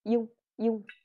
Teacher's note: Nhưng mình đọc liền và đọc nhanh vào. Âm y nó đọc gọi là chỉ lướt lướt qua thôi